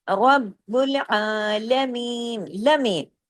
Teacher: اب دیکھیں لام زبر لا ایک حرکت ہے، لام کو زیادہ نہیں کھینچنا، آ کو کھینچنا ہے